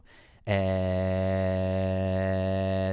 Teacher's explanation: so there's a spike in frequencies around a little less than 2,000 HZ and and another one between like around 600 or 700 Hertz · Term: forance